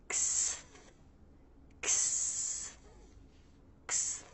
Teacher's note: Now we have the K, S, and TH sounds together. They're all unvoiced, so we're just passing air through, no engagement of the vocal cords.